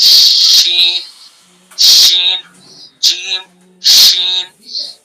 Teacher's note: شین زبان کا بیچ اور اس کے مقابل اوپر کا تعلق